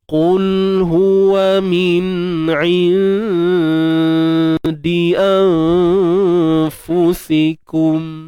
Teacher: nun mati bertemu dal dengan nun mati bertemu fa, dua-dua ni dua-dua dengungnya nipis sahaja. Dua-dua dengungnya nipis. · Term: ikhfa haqiqi